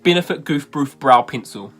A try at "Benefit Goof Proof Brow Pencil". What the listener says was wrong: I think you said broof that time.